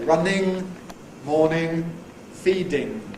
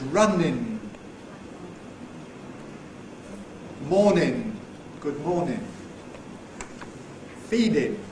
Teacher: the non-standard form involves an alveolar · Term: ing ending